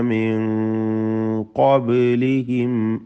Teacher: സാക്കിന നൂൻ ഇഖ്ഫ ഹഖീഖി നൽകി മറച്ചു മണിച്ച് അവ്യക്തമാക്കി മണിച്ചുകൊണ്ട് ഓതണം. മണിക്കലിൽ തഫ്ഖീമോട് കൂടിയാണ് ഉച്ചരിക്കേണ്ടത്.